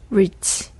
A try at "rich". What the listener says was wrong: 아니요. 이 모음 좀 안 들어갔어. rich. 이게 이 모음이 들어가는 거고 없을 때는 rich.